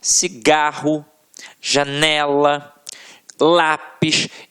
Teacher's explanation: paroxítonas, em que a sílaba tônica está na penúltima sílaba